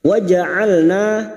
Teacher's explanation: na fathah diikuti alif 2 harokat kita panjangkan mad tabi'i